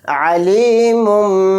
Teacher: میم کو چھوٹے میم میں ملا کر غنہ اور اخفا کے ساتھ پڑھیں گے